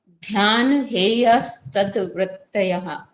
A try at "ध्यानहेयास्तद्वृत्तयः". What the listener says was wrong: वृत्तयाः नहीं है, वृत्तयः। या नहीं है, यह है।